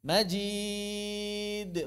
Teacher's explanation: Ba jim dal tipis, jangan ditebalkan. Ya. Majid, bukan majid, do.